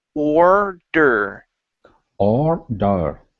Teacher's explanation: we're only going to hit our tongue once against the top of our mouth and it's on the D